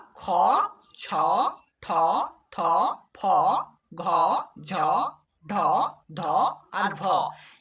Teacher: এই বাংলা বর্ণগুলোকে বলা হয় মহাপ্রাণ বর্ণ। অর্থাৎ এই বর্ণগুলো যখন আমরা উচ্চারণ করি আমাদের নিঃশ্বাসের মধ্য দিয়ে একটা হ ধ্বনি উচ্চারিত হয়।